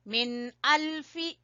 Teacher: یہاں اظہار ہے، نون ساکن کے بعد حمزہ